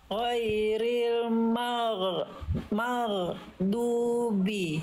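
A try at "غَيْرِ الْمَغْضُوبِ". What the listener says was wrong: Oke, dilatih lagi itu masih ya, masih ada mago gitu ya.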